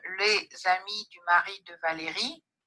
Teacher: there is a small rise at the end of each AP, but there is a larger rise on the syllable re, which coincides with the right edge of the intermediate phrase.